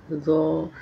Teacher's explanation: ज़बान की नोक को ऊपर के दो दांतों के किनारे इस तरह लगाना कि सामने बैठे शख्स को थोड़ी सी ज़बान दिखाई दे, अदा होगा ज़ो